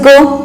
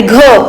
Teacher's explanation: घ ग प्लस ह असा उच्चार येतो म्हणून झाला तो महाप्राण